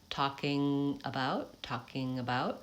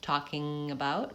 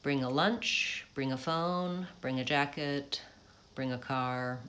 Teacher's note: We do link that NG to the next word, talking about, but you want to make sure that it doesn't become talking about or talking about.